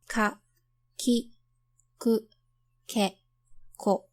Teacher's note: You make velar consonants when you raise the back of your tongue to the soft palate, also known as the velum, to block or restrict airflow. The velar consonants found in Japanese are k, as in kiss in English, but less aspirated.